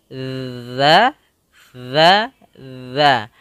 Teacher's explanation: kita menempelkan ujung lidah kita dengan gigi seri